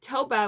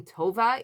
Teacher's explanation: the B and V sounds will get mixed up when someone is speaking Spanish